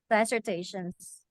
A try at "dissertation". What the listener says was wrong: No, it's not dissertation. It's dissertation. Dissertation. It's not an I. It's a dissertation. Yeah, in the Philippines, we say dissertation. Yeah, just remember that it's not it's a cultural thing. It's a Filipino thing.